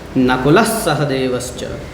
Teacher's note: विसर्ग का उच्चारण दंत सकार ही हो जाएगा